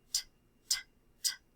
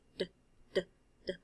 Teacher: My voice is the difference between the t sound and the d sound. I'm making them the same way, except when I say d, I'm using my vocal cords and I'm using my voice. When I say t, I'm not using my voice.